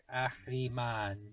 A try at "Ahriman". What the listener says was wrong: There's no ch in this one. There's no ch sound. Ahriman. Ahriman. No phlegm. Don't phlegm. Ahriman.